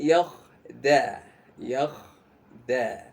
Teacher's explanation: seolah-olah rongga mulut kita ini seperti kayak dipenuhi udara. Karena sebenarnya adalah karena bagian tengah lidah kita ini terangkat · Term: huruf isti'la